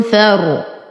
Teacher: أنتقل من فتحة الفاء إلى إسكان الراء دون أي ذكر للهمزة، فنقول فا فتحة را سكون فار. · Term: همزة الوصل